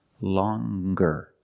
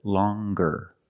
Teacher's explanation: With a nasal sound, plus the hard g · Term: hard g sound